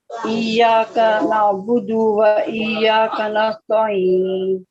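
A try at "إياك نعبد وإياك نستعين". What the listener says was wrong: پھر سے آئین جو نستعین کا آئین ہے نا اس کو تھوڑا لائٹ کرنے کی کوشش کریں, ٹھیک ہے.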